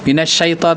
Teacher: Tafashi itu ada ketika membaca sh itu ada udara yang berkumpul dalam mulut kita.